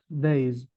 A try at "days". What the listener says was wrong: انه ويت، خلال الريدنج اس الجمع انت مش عم تلفظها. طبعا اس الجمع كتير مهم انه نلفظها جايز. اذا ما لفظنا اس الجمع المستمع حيفكر انه نحن عم نستخدم السنجولر، فأكيد أي اس بنهاية الوورد المفروض أنه تلفظ بوضوح. بعرف أنه باللغة الفرنسية أحيانا في نهايات حروف لا تلفظ، بس أكيد جايز كل لغة إلها رولز بتخصها.